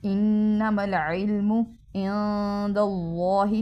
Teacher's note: انما العلم عند اللہ، نون ساکن ہے تو اس پہ غنہ جو اخفا کریں گے، چھپائیں گے، اور اللہ کے نام کو موٹا پڑھیں گے